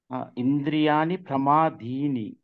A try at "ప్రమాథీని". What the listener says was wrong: ది కాదు, ఇది second త ఒత్తుత. సెకండ్ దా కాదు, ఇది సెకండ్ థా.